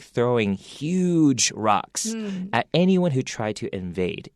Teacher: a lot of times we'll actually emphasize huge by making it longer